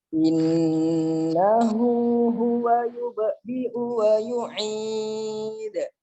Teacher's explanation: Nah, itu sering kalau kita tidak teliti nanti membaca hamzah seperti ain atau membaca ain seperti hamzah. Huwa yubdi'u baru wa yu'id pakai ain kalau wa yu'id ya. Kalau yang yubdi'u-nya pakai hamzah. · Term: hamzah ya dan ain